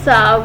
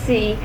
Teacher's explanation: Sa is an alveolar fricative. It is articulated by bringing the blade of the tongue closer to the alveolar ridge. It is a fricative, so air goes out with friction.